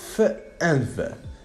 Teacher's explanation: in the production of these two sounds what happens is exactly the air is blocked by touching the bottom lip to the upper teeth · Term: labiodentals